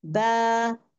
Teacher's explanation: बा, जब हम मुंह खोलते हैं ना, जब फतह पढ़ते हैं ना, बा में क्या होता है? The jaws go more down. बा, कीपिंग द माउथ ओपन, मुंह खुला रहता है।